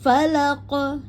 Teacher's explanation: Falaqo ya bunyinya qo falaqo jangan falak falaqo ya tebal karena dia sifatnya istilla · maka untuk qaf yang dikolkolokan di belakang ayat ya, maka bersifat kubro, jadi jelas terbaca atau memantulkannya jelas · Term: kolkola